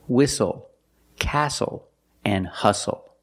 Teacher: The T is silent with the spelling pattern S-T-L-E. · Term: silent T